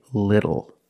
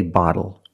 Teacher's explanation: phonetically the t is between vowels and for this reason the T changes to a fast D in American pronunciation